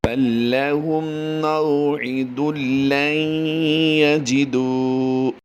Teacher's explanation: میم ساکن کے بعد اگر حرف میم آ جائے یعنی دوسری میم آ جائے تو وہاں پر ادغام شفوی کا قاعدہ ہوتا ہے، غنہ کر کے پڑھتے ہیں